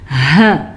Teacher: یہ ہا سینے سے نکلتی ہے